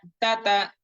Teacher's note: তা অক্ষরটি যখন উচ্চারণ করা হয় তখন আমাদের জিহ্বার আগা সামনের উপরে দুই দাঁতের গোড়ার সঙ্গে অটোমেটিক্যালি লেগে যায়, লেগে স্পর্শ করে এটা উচ্চারণ হয়।